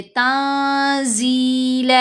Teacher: نون کی آواز کو ناک میں چھپائیں گے، ساتھ غنہ کریں گے، تنزیلا، 2 زبر کے اوپر وقف ہے تو ایک زبر پڑھی جائے گی اور ایک زبر خاموش رہے گی. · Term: احفا